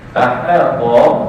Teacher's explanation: Aha jangan jadi hata. Ha balik atas nipis, jadi kena bunyi dengan aha. To baru tebal. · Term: huruf ha